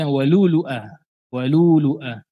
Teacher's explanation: Hamzah yang pertama dijadikan, dihilangkan hamzahnya.